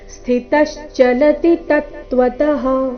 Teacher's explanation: ಅದನ್ನ ದೀರ್ಘ ಕೂಡ ಮಾಡಬಾರದು ಸ್ಥಿತಶ್ಚಲತಿ ತತ್ವತಃ ಈ ರೀತಿ ಕಂಟಿನ್ಯೂಸ್ ಆಗಿ ಹೇಳಬೇಕು ಸ್ಥಿತ ಮೇಲೆ ಆಘಾತ ಬರಬೇಕು